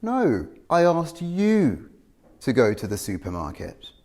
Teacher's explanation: Notice that we're using falling intonation on you. The vowel is longer and it's louder than the other words. This is used to show the difference between what I said and what they did. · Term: contrastive stress